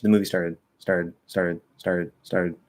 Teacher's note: i kind of start to bring my tongue up like i'm going to flap but i don't actually flap